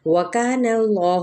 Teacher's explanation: وکان اللہ، واو ہونٹوں کی نا تمام گلائی کے ساتھ، کاف باریک ادا کریں گے الف مدہ کے ساتھ، اس میں جلالہ کا لام پر پڑا جائے گا کیونکہ پیچھے فتحہ ہے یعنی زبر۔